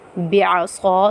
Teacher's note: صاد کے بعد الف مدہ آ رہا ہے، تو صاد کو ہم ایک الف کی مقدار کھینچ کر پڑھیں گے